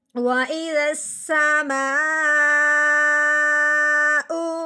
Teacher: اس مد کا نام ہو گیا مد متصل۔ تو جب مد کے فوراً بعد حمزہ آ جائے تو اس مد کو 4 الف کے برابر لمبا کیا جاتا ہے